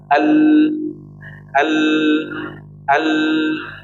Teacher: Jadi yang menjadikan huruf lam ini sifatnya tabainiyah atau setengah mengalir karena tidak rapatnya di bagian nih, perhatikan nih, samping. Tidak rapatnya di bagian sisi kanan dan sisi kiri. Oke, di ujungnya dia rapat. Nah, makanya tadi ada maknanya adalah jarayanu juz'i atau mengalirnya sebagian lain suara kemudian ditahan. · Ada aliran suaranya di bagian samping kanan dan kiri. Jadi nggak rapat, ibaratnya dia nutup tapi nggak rapat.